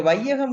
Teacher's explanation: ஐ இருக்கிறது அது வந்து ரெண்டு மாத்திரையாக உச்சரிக்கப்படாமல் ஒரு மாத்திரையாக உச்சரிக்கப்படுகிறது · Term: ஐகார குறுக்கம்